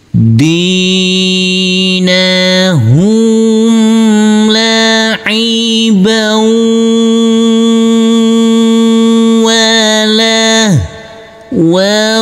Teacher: Huruf ba yang berfathah tanwin bertemu dengan huruf wawu yang bertasdid, ini adalah bacaan idgham bi gunnah, maka huruf ba langsung masuk ke huruf wawu. Tanwinnya di sini fathah tanwin, kita leburkan, huruf wawu kita tekan, kita tahan serta kita dengungkan.